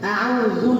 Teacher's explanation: আউযু বিল্লাহ, শক্ত করে দিবেন সব সময়, আকে শক্ত করবেন। আউযু, জুটাকে নরম করে দিবেন, আউযু যেন দু না হয়